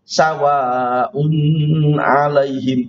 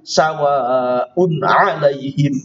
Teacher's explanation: Maka ini dibaca idhar, dibaca jelas. Tidak bisa dibaca secara dengung.